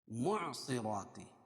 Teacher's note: معصرات صاد کو موٹا پڑھیں گے حروف مستعلیہ میں سے. را کھڑا زبر ہے.